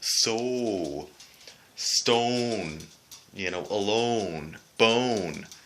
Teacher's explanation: that would be the Canadian way of pronouncing the letter oh and it's a long Oh sound